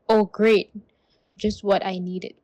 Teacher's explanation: The stress on great clearly says the opposite of what the word means.